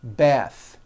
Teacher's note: The word bath is a noun with an unvoiced TH.